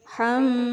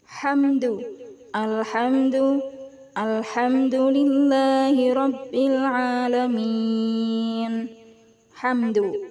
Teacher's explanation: mim sukun bertemu dengan huruf Dal cara membacanya juga harus terang dan jelas tidak boleh dengung ya tidak boleh HAM Enggak boleh gitu tapi hamdu alhamdu alhamdulillahiabbil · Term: izhar syafawi